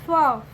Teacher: फ में बच्चों ह का उच्चारण निकल के आ रहा है